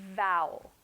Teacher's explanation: The word vowel, the V in English, is produced by placing your top teeth on your lower lip.